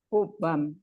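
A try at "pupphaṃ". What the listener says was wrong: Pupam, yeah, double P. There's no B. PP, pupa.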